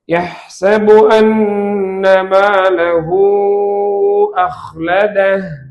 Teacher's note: மத்து சிலத்துல் குப்ரா என்றால் ஹாவுல் நமீருக்கு பின்னால் ஹம்சா வந்தால் அதை நீட்ட வேண்டும், 3 அலிஃபுகள்.